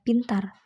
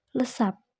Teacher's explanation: maka contoh yang pertama itu diucapkannya itu secara meletup. Nah, sedangkan contoh yang kedua itu cara diucapkannya itu dengan cara tidak meletup